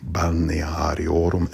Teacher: The M at the end, I would not pronounce balneariorum. You would nasalize the U, balneariorum, and not pronounce the M.